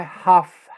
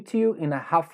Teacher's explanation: esse l eu não pronuncio